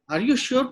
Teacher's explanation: flat থেকে শিওর বলতে বলতে কিন্তু টোনটা উপরে উঠে গেল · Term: rising tone